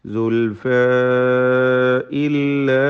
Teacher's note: സുൽഫ ഇതിലെ അലിഫിനെ മദ് മുൻഫസിൽ ജായിസ് നൽകി 4-5 ഹറക്കത്തിൻ്റെ അളവിൽ ദീർഘിപ്പിക്കൽ അനുവദനീയമാണ്.